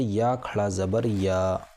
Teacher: یہ حرف مدہ کی طرح ایک الف کے برابر کھینچ کر پڑھا جائے گا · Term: مد صلہ